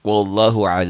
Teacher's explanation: ini mad asli panjangnya satu Alif atau dua ketukan dua harakat